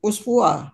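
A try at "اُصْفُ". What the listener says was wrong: Anta uspu pendek, tak panjang.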